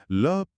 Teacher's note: ल पार्श्विक है। इसमें जीभ बीच में ब्लॉक बनाती है और हवा साइड से निकल जाती है।